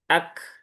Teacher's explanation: dia setelah keluar sifat syiddah dari huruf kaf kemudian diikuti dengan sifat hames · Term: kaf dalam kondisi sukun